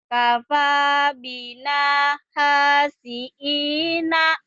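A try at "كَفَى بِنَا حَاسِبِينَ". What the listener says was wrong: oh ini hi ya, bukan ini ba. Kafa bina hasibina.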